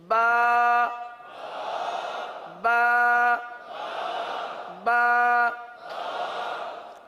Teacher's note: تو غلط ادائیگی وہ بھی آپ کے سامنے رکھ دی، اب ہمیں درست ادائیگی اختیار کرتے ہوئے دونوں ہونٹوں کے تر حصے سے با با با۔ اب اس کی مقدار بھی ہے نا، حرف کی مقدار بھی ہے، یہ جو ہم حرف ادا کر رہے ہیں ایک الف تک کھینچ کے پڑھ رہے ہیں۔